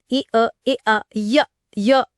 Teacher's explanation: इसका सीधा संबंध उच्चारण स्थान से है। इ और य दोनों तालु से बोले जाते हैं।